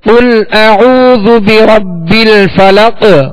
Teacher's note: اسی طرح بربل فلق تو قاف آخر میں اس پر ہم نے وقف کیا تو وقف کی صورت میں یہ ساکن ہوگا اور اس پر قلقلہ ہوگا، یعنی آواز میں جنبش ہوگی، آواز لوٹتی ہوئی آئے گی